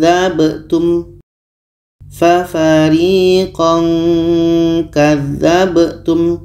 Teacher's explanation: huruf k k ini letaknya adalah di Pangkal lidah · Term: ikhfa